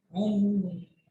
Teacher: आवाज नाक में रोकते हैं, तो मीम की आवाज को हम नाक में रोक रहे हैं, हुम। फबश्शिरहुम बिअज़ाबिन। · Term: गुन्ना